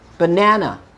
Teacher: Or let's say, for example, I have the word banana, banana. So unstressed, stressed in the middle, and the last syllable is unstressed.